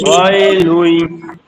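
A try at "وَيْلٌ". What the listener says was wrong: লুই একটু গুণনা হবে, তানবিনের পরে ইদগামে বাগুন্না। ওয়াইলুই এই দেখেন এখানে ইদগামে বাগুন্না, আবার এখানে ইদগামে বেলাগুন্না।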